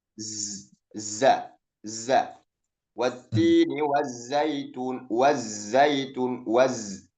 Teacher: Kemudian sifatnya sofir, yakni suara yang tajam. Ya, ketika kita mengucapkan huruf zai itu harus ada suara tajam, ya, suara yang tajam. Z, za, za. Wattini wazzaitun, wazzaitun, waz.